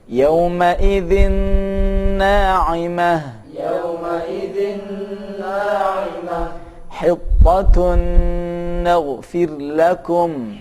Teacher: Ini contoh saat nun mati atau tanwin yang bertemu dengan nun melebur dan didengungkan. Yauma idzin na'imah. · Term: idgham bi gunnah